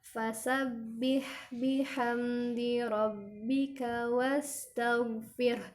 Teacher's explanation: Di ayat ketiga ada ha bertanda sukun, maka harus terdengar sifat tipisnya karena ha keluar dari tenggorokan bagian tengah. Jadi ketika kita tekan tenggorokan bagian tengah kita, maka akan terasa getaran ketika membaca huruf H, terutama ketika sukun seperti di ayat 3 ini.